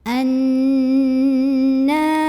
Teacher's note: Nun yang bertasydid maka cara membunyikannya adalah didengungkan nya jadi ini ditahan bunyinya kurang lebih dua harokat · Jadi ini ditahan bunyi n-nya kurang lebih 2 harokat.